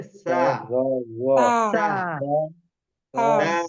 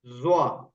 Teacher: سا اور زال کی آواز باریک ہوتی ہے اور زوا کی تھوڑی سی موٹی